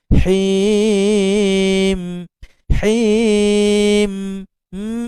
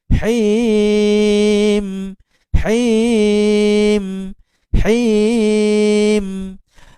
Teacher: him pada mim yang sukun kena keluarkan angin sedikit melalui hidung.